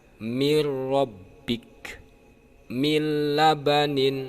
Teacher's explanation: yaitu idgham bilagunnah nun sukun bertemu dengan huruf pertama yaitu roh yang disebutkan dengan Idgham bilagunnah itu tanpa didengungkan